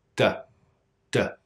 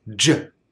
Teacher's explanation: the D sound completely releases the tongue but the J sound does not completely release the tongue it moves from stopping the air into that channel the only